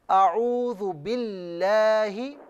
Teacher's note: اعوذ باللہ آپ نے پڑھا تو اس میں لفظ اللہ کی جو لام ہے اسے باریک پڑھیے